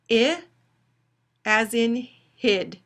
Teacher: it's a high mid-front LAX unrounded vowel